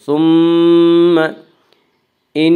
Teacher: ثم ان نون مشدد غنہ ہے، غنہ کی مقدار 1 الف ہے۔